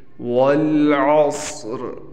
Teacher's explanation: والعصر، یہاں پر صاد کو ہم نے موٹا پڑھنا ہے اور را کو ہم نے بالکل ختم نہیں کرنا، یہ بات یاد رکھیں۔